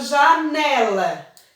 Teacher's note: janela a sílaba forte a sílaba tônica é a penúltima ou seja penúltima e que vem uma antes da última não